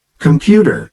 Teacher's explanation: the word computer is stressed on the second syllable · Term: word stress